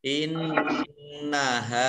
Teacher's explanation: nun tasdid dibaca mendengung gunnah 2 harokat, kemudian ha fathah alif mad tabi'i 2 harokat.